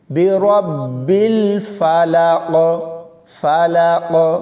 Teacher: اس کے بعد قاف کلکلا ہوگا، کیوں؟ جب ہم یہاں وقف کریں گے تو قاف کے نیچے زیر جزم میں بدل جائے گی، اس لیے یہاں پر کلکلا کر کے پڑھیں گے